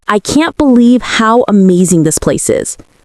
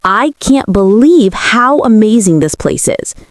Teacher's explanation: Notice the stress on can't and amazing and the rhythm of the sentence.